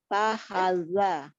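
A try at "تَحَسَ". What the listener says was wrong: Sa. Ini sa, ujung lidahnya ada di ujung gigi seri atas. Ta, ha, sa. Sa, sa. Bukan za, ini sa.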